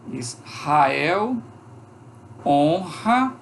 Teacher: eu tenho um R depois de uma consoante, esse R é pronunciado como R forte